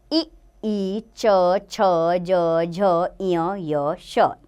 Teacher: ताल्य यानी कि इनको बोलते हुए तालु, तालु पर हमारी जिह्वा टच होती है।